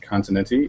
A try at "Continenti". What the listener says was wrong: Except my last name doesn't have 3 syllables.